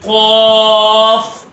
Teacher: زبان کا جو آخر حصہ ہے وہ کوے میں، جب کوے کے حصے پہ لگائیں گے تو قاف کی آواز پیدا ہوگی